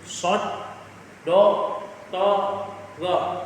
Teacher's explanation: Nah, huruf tersebut merupakan huruf dari sifat itbaq. Yakni lidah terangkat sangat tinggi hingga seolah-olah menimpa langit-langit dan tidak menyisakan ruang at lidah dengan langit-langit.